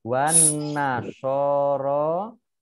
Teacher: Alif Lam Syamsiah tidak dibaca langsung masuk ke huruf berikutnya